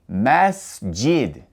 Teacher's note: The S has no vowel sound coming after it. After pronouncing the S, you go straight to the J. Masjid. There is a e u sound after the s and that's because the s does not have a haraka. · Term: sukun